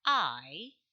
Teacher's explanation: indicating the direction of the movement so if it is I it moves from sound ah to e by gliding